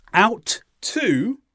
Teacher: We don't say out to. We don't say the T sound twice. When we have two consonants that are the same together, join them together and say them only once.